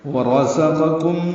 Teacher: ورزقکم، واو ہونٹ کی نا تمام گلائی سے ادا کریں گے، را پر پڑھیں گے۔ زا کو تیز صفیر کی آواز سے ادا کریں گے، قاف پر پڑھیں گے، پھر کاف باریک ہے، پھر میم ساکن کے بعد میم آنے کی وجہ سے ادغام ہے۔